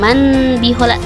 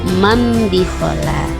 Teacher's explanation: Contohnya bikhala, nun matinya enggak terdengar juga ya, karena nun mati seakan-akan berubah menjadi mim bunyinya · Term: iqlab